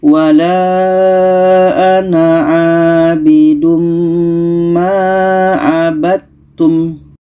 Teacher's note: Dal kita masukkan ke ta, tidak jadi qalqalahnya.